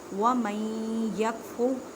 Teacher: نون ساکن کے بعد یا ہے تو یا حروف یرملون ہے، ادغام مع غنہ کریں۔